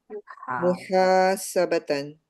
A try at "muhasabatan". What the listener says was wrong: Yes, we always use this word.